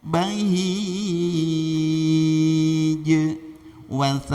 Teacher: karena jim itu jahar dan syiddah, tidak boleh mendesahkan napas